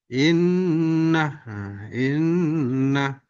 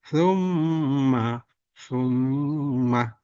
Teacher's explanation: mim ketika bertasdid satu huruf mati sukun satu huruf hidup fathah maka dibaca dengan dengung ditahan dua atau tiga harakat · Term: gunna musyaddadah